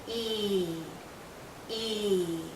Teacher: Our lips are very spread, very pulled out, and this is a long vowel sound. So think of your lips being pulled out like the vowel sound is being pulled out because it's a long sound.